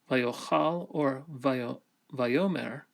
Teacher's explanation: And in the case of the vav consecutive imperfect, whether we're talking about vayochal or vayomer, the accent also moves forward to the beginning of the word.